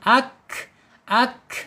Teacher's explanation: Ka ya, makhrajnya ada di al-lisan yaitu ujung lidah menyentuh langit-langit yang berdaging, ka. Kemudian secara sifat al-hamas ketika dia sukun ak ya, alirkan napas kita.